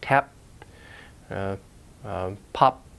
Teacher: Now, at the end of a word, those sounds may not be released. Those are allophones where you don't release the air, like tap, pop.